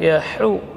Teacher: Ha huruf hamas dan rakhawah keluar di tengah tenggorokan.